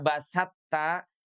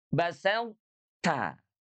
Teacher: Tidak basatta, bunyinya tidak basatta, tapi huruf to-nya itu dia harus ada isti'la dan juga itbaqnya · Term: idgham nakis